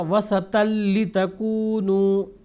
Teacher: نون کی آواز مکمل طور پر دوسرے حرف میں مل جائے گی · تن جو طا کے اوپر دو زبر ہے اس کی جو نون کی آواز ہے وہ لام میں تبدیل ہو رہی ہے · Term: ادغام بلا غنہ